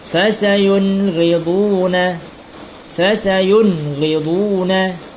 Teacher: Dibaca jelas nun matinya dengan tiada berdengung. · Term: izhar